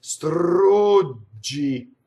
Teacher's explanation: We make expression in Italian by the rolled R and also by the long U vowel